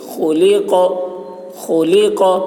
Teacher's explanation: خا حلق سے، قاف کی آواز موٹی ہوگی